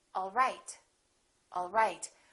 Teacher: my pitch goes down at the end for a statement